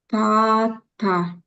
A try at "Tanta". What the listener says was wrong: Tanta. Tanta. Yeah, there's a secret N here. It's illegal. It's a exception, okay?